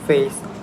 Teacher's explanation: diphthongs like a in face, or O in goat are often simplified into monophthongs, making face sound more like face and goat more like god.